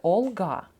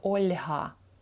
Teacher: буква л Не пом'якшується в англійській мові